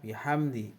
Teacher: Idhar sawawi karena ada huruf mim mati atau sukun bertemu dan huruf dal. Cara membacanya terang di bibir dengan mulut tertutup.